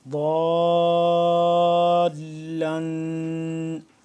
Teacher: اس کی آواز کو آپ ناک میں لے کے جائیں گے، تو اس طرح سے غنہ ہوگا